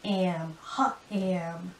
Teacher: I kind of changed the sound of the a little. Instead of the a, it kind of becomes an eh.